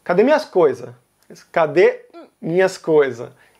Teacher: muitas vezes o artigo definido as também vai desaparecer